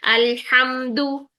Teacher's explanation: लाम साकिन को हिलाना नहीं है, मीम साकिन को हिलाना नहीं है